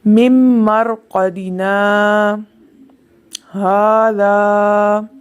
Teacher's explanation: مرقدنا کے بعد آواز رک گئی اور پھر ھذا کی آواز آئی لیکن سانس جاری رہا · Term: سکتہ